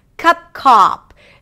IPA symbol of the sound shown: ʌ - ɑ